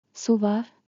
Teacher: With a rising tone turns into a question